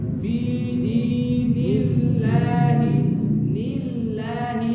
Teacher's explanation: di sini fi-nya panjang, di-nya panjang.